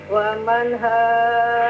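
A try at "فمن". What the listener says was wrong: Faman, jangan dirubah wamannya, tapi pakai fa. Faman haj.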